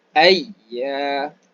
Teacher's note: Tengah lidah diangkat naik ke atas. Ada tekanan sedikit. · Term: huruf ya